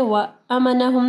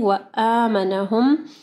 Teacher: حمزہ ہے، اس کے بعد جو ہے الف مدہ ہے، تو اس کو اسٹریچ کرنا ہے. وَأَمَنَهُمْ نہیں وَآمَنَهُمْ.